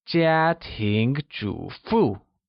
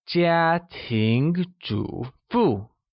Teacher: Now let's look at the tones required to pronounce housewife in Mandarin. 家庭 uses the high level tone on A and a mid-rising tone on I, while 主妇 uses the falling rising tone on the first U and a falling tone on the second U. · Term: all four tones